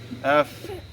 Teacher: উপরের দাঁত আর নিচের ঠোঁট একত্রিত হয়ে হালকা বাতাস বের হয়ে যাবে।